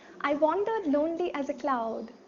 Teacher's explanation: tetrameter tetra means four so it's a set of four syllables unstressed stressed unstressed stressed unstressed stressed unstressed stressed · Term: iambic tetrameter